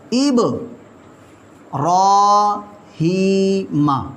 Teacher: را پر کھڑا زبر آ گیا، اس را کو ہم موٹا پڑھیں گے